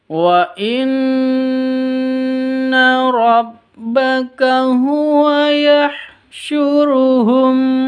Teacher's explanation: Nun tasydid ghunah musyaddadah jadi gunah musyaddadah namanya dengung didengungkan tiga ketuk